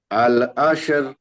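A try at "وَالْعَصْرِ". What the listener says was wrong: ওয়াল, আল না ওয়াল।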